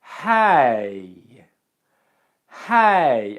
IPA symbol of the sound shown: eɪ